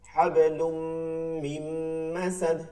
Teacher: এই যে হাবলুন ছিল, লাম 2 পেশ লুন, এরপরে এই যে তানবীনের পরে মিম আসছে, মিম ইয়া ওয়া মিম, এর জন্য পরবর্তী হরফ মিমকে একটা তাসদীদ দেয়া লাগছে, আর এটাকে গুণনা করে পড়তে হয়েছে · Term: ইদগামে বা গুন্না